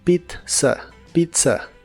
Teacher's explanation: la primera Z de la palabra Pizza se pronuncia como t y la segunda como s